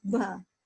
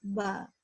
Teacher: Kalau ba dialek Jawa mungkin dia keluar nafas, ba. Nah, kalau Arabi dia enggak pakai nafas, ba, gitu.